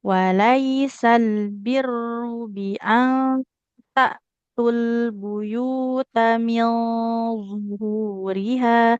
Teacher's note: Roknya ada tasdid ya, harus ditekan. Kemudian tidak panjang.